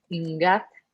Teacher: The next word is ingat, and stress is on the final syllable because it ends in a K. Therefore, the opening syllable ing is going to be low tone because it's unstressed and has a voiced coda.